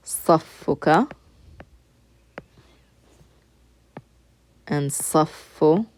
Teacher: So the word saf has a shadda in it. That's why you're pronouncing the fa twice.